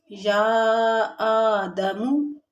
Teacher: قال یا آدم، یا یہاں پر مد ہے اور حمزہ پہ کھڑا زبر ہے، تو اس کو تھوڑا سا یا کو زیادہ کھینچیں گے اور آ کو تھوڑا کم کھینچیں گے